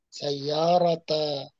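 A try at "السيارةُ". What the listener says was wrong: As-sayyaratu, as-sayyaratu. Ini di buku salah salah harokat. Yang benar as-sayyaratu dengan doma, bukan dengan fathah.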